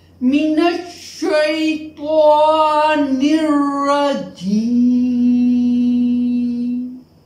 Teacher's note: we will pronounce it with a lengthening voice up till one harakat. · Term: Yae Maddah